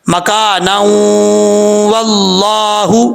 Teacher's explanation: اگر ملا کے پڑھیں گے تو ادغام یرملون ہوگا، تو پھر پڑھا جائے گا مکانا واللہ، غنہ کیا جائے گا 1 الف کی مقدار